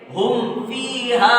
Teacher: جیسے اظہار شفوی، میم ساکن کے بعد میں با اور میم کے علاوہ کوئی حرف آئے گا تو اظہار شفوی ہوگا، یعنی میم ساکن کو ظاہر کر کے پڑھیں گے، بغیر غنہ کے ساتھ پڑھیں گے